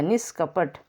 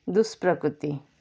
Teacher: इही या उहु के बाद क ख प फ आए तो विसर्ग के स्थान पर मूर्धन्य स हो जाता है। जैसे कि देखिए, निहि धन कपट, विसर्ग के बाद क आया है, क ख प फ आए तो बोला गया है क आ गया, तो विसर्ग के स्थान पर क्या हो गया, मूर्धन्य स हो गया, निष्कपट।